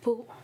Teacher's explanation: is a fourth tone of the downward tone